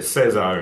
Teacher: So Caesar would change to Caesar. And the letter C later on palatalizes before E and I